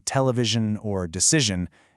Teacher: more of a zh sound instead of a hard shun, like in television or decision